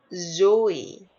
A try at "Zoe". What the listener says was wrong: And, your opening is too small. Zoe. It's going like that. Should be Zoe. Zoe. there should be movement on the vowel.